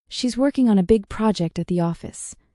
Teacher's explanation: Stress the words working, big, project, and office.